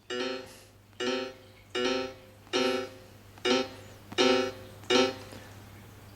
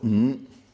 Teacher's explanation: That means it is made up by 2 sounds together and with the emphasis on the second sound. So the word ng and the tune is represented by a small 3 and a big 4, meaning mi, fa